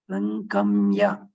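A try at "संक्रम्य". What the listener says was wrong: There is a repa there. Sankramya.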